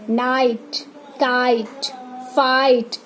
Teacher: नाइट, काइट, फाइट, आ और ई का sound निकल रहा है